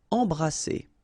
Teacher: Alright, E-M here, and then you've got a consonant after, so you get the nasal en. So you don't hear any M, it's really in your nose.